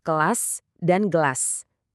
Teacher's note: Titik artikulasinya sama persis. Sama-sama pakai pangkal lidah yang nyentuh langit-langit lunak. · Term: dorsovelar